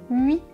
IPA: ɥ